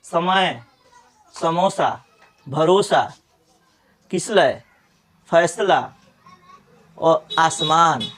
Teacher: हमारा जीव जो है दांत में छू रहा है, दांत को छू रहा है